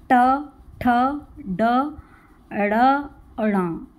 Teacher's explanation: इसमें जीभ हमारी मुड़ती है, हल्की सी मुड़ जाएगी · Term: ट वर्ग